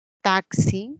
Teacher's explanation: Taxi sería la secuencia de dos sonidos. Un sonido oclusivo más un sonido fricativo.